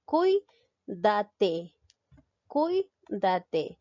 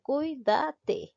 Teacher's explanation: me doy cuenta que la mayor fuerza de voz recae en la sílaba cuy